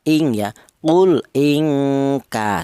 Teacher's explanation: dibaca ikhfa alasannya nun mati berjumpa dengan huruf kaf namanya ini adalah ifa adna atau ifa abad kemudian ingka ya panjangnya dengung dua harakat ing dua ketukan ing seperti itu. · Itu jika apabila nun mati berjumpa dengan huruf kaf ini, di mana nun mati ini, huruf nun ini makhrajnya di ujung lidah menyentuh langit-langit mulut, kemudian berjumpa dengan huruf kaf yaitu berada di pangkal lidah. Pangkal lidah itu lidah bagian belakang lah, antara langit-langit mulut ke pangkal lidah ini sangat berjauhan.